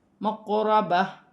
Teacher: اسے ایک الف کی مقدار کھینچ کر پڑھا جائے گا، مقربہ، قاف ساکن ہے، را موٹی پڑھی جائے گی ، وقف کی صورت میں 2 زیر کی تنوین گر جائے